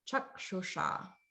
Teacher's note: S is like a sh sound, but it's the retroflex version. So that's like the Vishnu S. · So it's like a sh, but the tip of the tongue is pointing up towards the palate. So it's kind of curling back just a little bit.